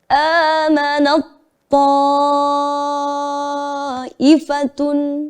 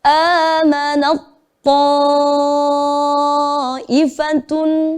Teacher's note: Jadi tidak sepenuhnya melebur ke huruf to, tapi sebenarnya ada sifat yang masih kita berikan kepada huruf yang pertama. Namun tidak tampak karena kita udah membacanya udah melebur ke huruf yang kedua.